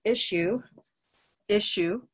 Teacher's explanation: these two S's become an SH sound